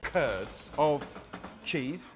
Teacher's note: the estuary english accent is also non-rhotic